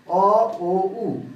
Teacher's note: এজন্য আমরা এই তিনটা ই, এ, এই তিনটা সামনের ভাগ থেকে উচ্চারিত হয়, এবং আ মাঝের ভাগ থেকে, এবং অ, ও, উ এই তিনটা উচ্চারণ হয় জিহ্বার পশ্চাৎ বা ব্যাক থেকে, পেছন থেকে। এই জন্য এটাকে আমরা পশ্চাৎ স্বরধ্বনি বলছি।